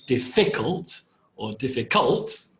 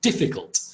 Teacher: the emphasis or the stress is on the first syllable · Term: word stress